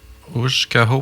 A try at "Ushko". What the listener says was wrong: Ushko. Le A, il ne se prononce pas. Ushko. Très peu. Ushko.